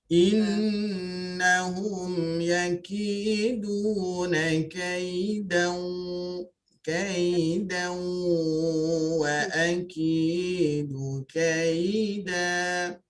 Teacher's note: bawa nun pada waw idgham ma'al gunnah berserta dengan dengung